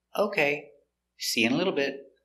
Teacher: intonation goes up before the comma